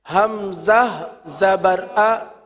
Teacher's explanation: کیونکہ حمزہ کی ادائیگی میں غلطی ہوتی ہے اس لیے تھوڑا سا توقف کے ساتھ پڑھا گیا